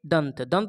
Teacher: दंत पढ़ रहे हैं तो ऊपर का दांत जीभ में लग रहा है